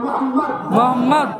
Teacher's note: খেয়াল করতে কোন নবীর নাম নিলে দুই ঠোঁটে ঠোঁট ঠেকছে